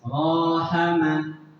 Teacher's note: fathah diikuti Alif dibaca panjang satu ayunan